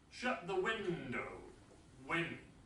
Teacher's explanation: This is a command, so this is falling intonation.